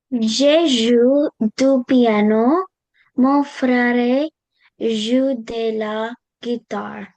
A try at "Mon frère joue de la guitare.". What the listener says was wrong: Okay, not frère, mon frère. The E is not pronounced here. Mon frère joue de la guitare.